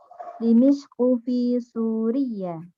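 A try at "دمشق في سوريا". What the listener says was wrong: Dimishq fi Suria. Iya-nya di sini tidak tasydid. Suria, Indonesia, Korea, dan teman-temannya.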